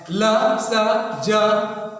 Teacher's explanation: दांत और जीभ सटता है